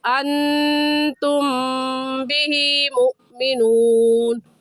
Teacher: میم ساکن کے بعد با آ گیا ہے تو اس صورت میں بھی میم ساکن پر غنہ کرتے ہیں، ایسے پڑھا جائے گا انتم بہ مؤمنون۔